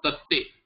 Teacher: So tad, te will become tatte, dakara will become takara by this chartvam.